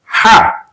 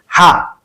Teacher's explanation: এই হাটিকে কণ্ঠনালীর একেবারে মধ্যখান থেকে প্রেসার দিয়ে উচ্চারণ করতে হয়, হা। কিন্তু আমরা অনেকে বিশুদ্ধ উচ্চারণ না জানার ফলে এটাকে ভুলভাবে উচ্চারণ করে থাকি, হা, একেবারে নরমাল উচ্চারণ।